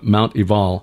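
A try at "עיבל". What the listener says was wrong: You may pronounce it Mount Ebal, but we've been told it's actually a V sound.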